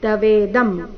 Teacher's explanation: ಅನುಸ್ವಾರದ ಉಚ್ಚಾರಣೆ ಮ ರೀತಿ